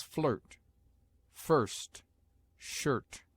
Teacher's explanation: I is often sounded before r, as a short u